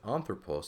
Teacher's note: the accent is on the third to last syllable, or the first syllable here, coincidentally, that is just as important, that accent being over the alpha, that is just as important as the alpha itself to the spelling of this word.